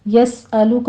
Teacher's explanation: یسألک میں سین پر سیٹی کے آواز سے ہمس کریں گے